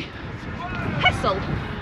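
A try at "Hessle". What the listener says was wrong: It's actually Hessel. You replace the S's with Z's.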